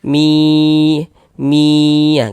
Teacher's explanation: Maka ini hukumnya masih idgham bi gunnah. Jadi bunyi nun sukunnya ini masuk melebur ke huruf ya ini.